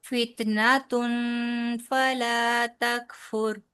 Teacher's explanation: نا کو لمبا نہیں کہنا، نون زبر نا، بس اتنا ہی ہے